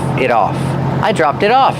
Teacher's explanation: And the T in it is a fast D because it's between vowels.